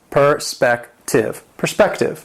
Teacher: It has three syllables. The stress is on the second syllable.